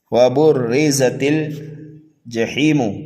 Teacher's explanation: را کو ہم باریک پڑھیں گے اور زا کو سینٹی کی آواز دے کر کے پڑھیں گے، تا کو لام میں ملائیں گے، جیم کو جلدی پڑھیں گے، ہا کو یا مدہ کی وجہ سے 1 الف کے برابر کھینچ کر کے پڑھیں گے، میم کو جلدی پڑھیں گے۔